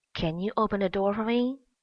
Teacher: this sentence is a yes/no question so rising intonation has to be made